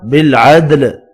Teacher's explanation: دال ساکن پر قلقلہ کریں گے، لام ساکن پڑھا جائے گا وف کی صورت میں۔